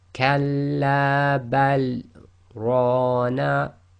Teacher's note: after the word bal you must take a pause, but you can't take a breath